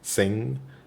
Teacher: what's happening to make a nasal sound is that air is going through your nose when you're pronouncing this sound